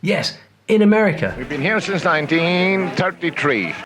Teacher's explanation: you're going to hear a lot of glottal stops